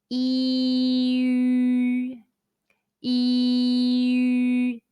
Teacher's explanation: Yu sound is like the double E sound in the English word be, but with rounded lips. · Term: final yu